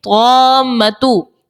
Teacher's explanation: تو یہاں پر مد لازم کا قاعدہ لگے گا اور 6 حرکات کی مقدار تک مد لازم کو کھینچ کر ادا کرتے ہیں